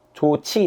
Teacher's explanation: 그러면 히읗 지읒 결합해서 치 된 거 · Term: 거센 소리 되기